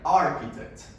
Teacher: say the word architect in received pronunciation as a British standard, we have the long A